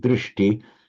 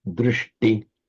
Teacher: wherever you get a sh followed by a t, they both become retroflex